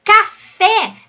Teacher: a sílaba tônica é a última é oxítona